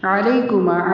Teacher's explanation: عین کی آواز حلق سے